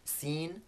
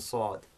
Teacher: And the way that heaviness is produced is that the front of the tongue is in contact with the same point of the mouth in both seen and sad. But for the sad, that contact is harder. And also the back of the tongue is raised. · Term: emphatic version of seen